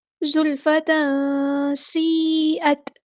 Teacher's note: زلفت سیئت سین کی سیٹی ہم واضح کریں گے، سین باریک لیٹر ہے، یہاں پر ہمیں مد دکھ رہی ہے، یہ کون سی مد ہے، مد متصل کنیکٹڈ مد ہے، 4 یا 5 کاؤنٹ ہم نے اس کو لمبا کرنا ہے